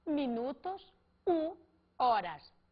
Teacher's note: o H no espanhol, foneticamente falando, é mudo